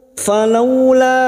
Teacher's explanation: fathah bertemu wau sukun kita lunakkan